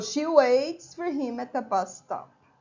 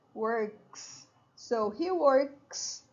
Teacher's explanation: the S is pronounced as an S not as an is nor as a z